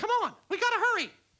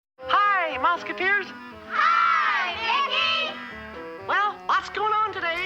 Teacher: the smoking dried out the vocal cords, which lowered the pitch